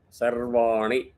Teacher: whenever you do Sarvani, Ni is Hrasvam, short, one matra. Va is two.